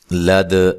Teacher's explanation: لد دال پہ قلقلہ کرنا ہے، دال کو ہلا کر پڑھنا ہے